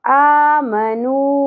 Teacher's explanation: اب یہ جو مد آپ کو نظر آ رہی ہے اس کی وجہ کیا ہے کہ یہاں حرف مدہ ہے واو، اور اس کے بعد جو حمزہ آ رہا ہے وہ نیکسٹ کلمہ نیکسٹ ورڈ کے سٹارٹ میں آ رہا ہے، اگلے لفظ کے سٹارٹ میں آ رہا ہے. تو یہاں پر مد منفصل ہوگی، تین الف کے برابر کھینچنا ہے اس کو